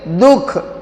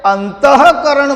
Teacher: પણ દુઃખ બોલીએ છીએ ત્યારે વિસર્ગનો ઉચ્ચાર થતો નથી એટલે દુ એ હંમેશા લઘુ ગણાશે.